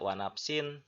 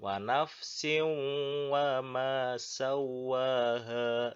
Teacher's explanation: Nah, tanwin kemudian bertemu dengan waw. Nah, maka itu harus dibaca wanafsiu, dimasukkan ke waw. Tidak wanapsin ya, tapi wanapsiu. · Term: idgham bigunah